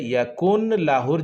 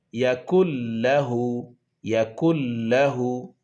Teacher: এরপরে লাম আসার কারণে, নুন সাকিনের পরে লাম আসার কারণে এই নুনের যে ইয়াকুন উন, এই নুন সাকিনের আওয়াজটি লামের সাথে একদম মিলিয়ে যাবে। ওদিকে পড়তে হবে ইয়াকুন লাহুর জায়গায় ইয়াকুল্লাহু, ইয়াকুল্লাহু। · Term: ইদগাম